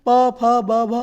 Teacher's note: होठों से आपका प वर्ग बोला जाता है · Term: ओष्ठ